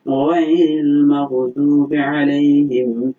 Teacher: এই গয়ন উচ্চারণের সময় কণ্ঠনালীর শেষ ভাগ থেকে আমাদেরকে এটা উচ্চারণ করতে হবে